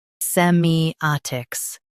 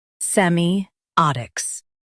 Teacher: Emphasize a in US, ot in UK.